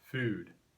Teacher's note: Older speakers in California often pronounce the vowel oo far back in their mouth, food, but younger speakers typically pronounce it further forward in the mouth